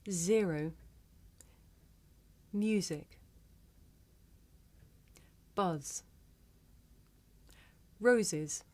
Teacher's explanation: This is a voiced consonant. You can hear it at the beginning of the word zero, in the middle of the word music, at the end of the word buzz, and in the middle and at the end of the word roses.